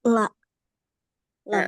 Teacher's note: huruf lam tepi lidah bagian depan bertemu dengan gusi atas. Sifatnya ada inhiraf.